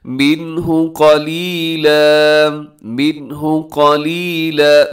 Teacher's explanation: मिन्हु में इजहार हो रहा है, यानी अपनी यहाँ पर आवाज़ को नाक में नहीं लेके जाना बल्कि तेज़ी से इस लफ्ज़ को अदा कर देना है।